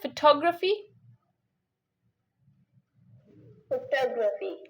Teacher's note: tog is stressed here that's why you can see it more louder hear it more louder clearer and longer as compared to other